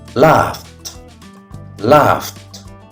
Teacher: This word ends with the sound f, which is voiceless.